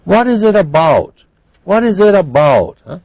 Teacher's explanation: they have a declining intonation at the end because we want a factual answer